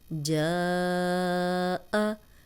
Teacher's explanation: अब अलिफ मद्दा के आगे हमज़ा था तो हमने 4 हरकत लंबा किया